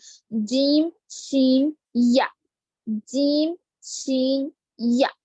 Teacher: जुबान का दरमियानी हिस्सा यानी वसतुल लिसान, ऊपर के तालु को लगने से 3 हुरूफ निकलते हैं, वो है जीम, शीन, या। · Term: हुरूफ शजरिया